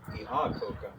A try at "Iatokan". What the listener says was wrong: I think that A on the end is nasalized. Yeah.